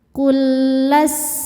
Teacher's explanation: Di sini ada hukum idgham mutamatsilain karena lam sukun bertemu dengan lam yang berharokat hidup. Cara bacanya lam yang sukun dimasukkan ke lam kedua tanpa ditahan ya, nggak ada dengungnya. Dua huruf yang sama makhrajnya dan sama sifatnya bertemu ya.